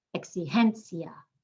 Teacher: The I and the A are making one sound at the end. We're emphasizing the second to last.